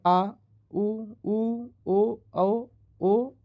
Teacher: पश्च स्वर, जिन स्वरों के उच्चारण में जीभ का पश्च भाग काम में लाया जाता है